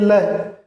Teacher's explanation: ये ल, इसे हम पार्श्विक बगल का या लेटरल व्यंजन कहते हैं, क्योंकि इसके उच्चारण करते समय हवा जो ये जीभ के दोनों किनारों से निकलती है। ल, जीभ के दोनों पार्श्वों से हवा निकलती है, इसीलिए ल को पार्श्विक, लेटरल या बगल का, जीभ के बगल से हवा निकलती है, इसीलिए लय को पार्श्विक बगल लेटरल या बगल का कहा गया है।